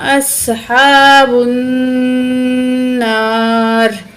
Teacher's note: बिआयातिना, बिआयातिना उलाइका अस्हाबुन नार, तो यहाँ हमज़ा को स्वाद से मिलाएंगे, स्वाद को मोटा करके पढ़ेंगे, हा निकाल के पढ़ेंगे, हा के ऊपर खड़ी ज़बर है, एक अलिफ की मिकदार खींचेंगे, बा को आगे नून के साथ मिलाएंगे, ठीक है, अलिफ और लाम नहीं पढ़ा जाएगा, नून के ऊपर तशदीद है, गुन्ना करेंगे, नाक में आवाज़ ले जाकर ठहरेंगे, ठीक है।